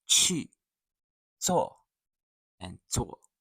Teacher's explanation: The fourth tone drops sharply.